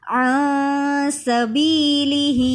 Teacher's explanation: نون کی آواز کو ناک میں چھپا کر پڑھ رہے ہیں کیونکہ نون ساکن کے بعد حرف اخفا میں سے سین ہے